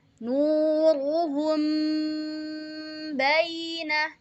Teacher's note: Nah, jadi ketika ada mim sukun bertemu dengan ba, maka kita bacanya samar-samar. Jadi mimnya itu agak ditahan sebentar. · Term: ikhfa syafawi